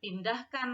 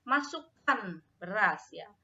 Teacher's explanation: Nah, jadi ciri dari kalimat perintah ini dia ada intonasi ya, ada intonasi pada saat pengucapannya, intonasinya meninggi dari rendah meninggi